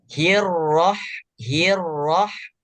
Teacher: Jadi tidak terlalu o dan juga tidak terlalu a